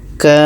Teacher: Kita panjangkan dulu 6 harakat, baru sambut dengan tasydidnya. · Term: mad lazim kilmi mutsaqqal